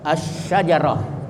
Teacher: Jadi lamnya itu tidak dibaca, tapi dimasukkan ke shin, huruf pertama dari sesudah lam, atau di tasdid asy-syajarah. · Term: idgham syamsiyah